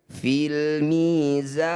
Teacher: Cara bacanya za kita tambah panjangnya jadi 6 harokat. Huruf yang terakhir kita sukunkan. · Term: mad arid disukun